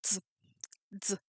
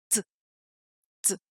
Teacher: Et quand vous faites z, z, est-ce que vous remarquez que vous avez créé une sorte de barrière pour empêcher l'air de sortir d'abord et puis vous avez ouvert cette barrière pour laisser l'air sortir